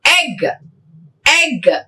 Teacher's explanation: Front unrounded vowel between half close and half open.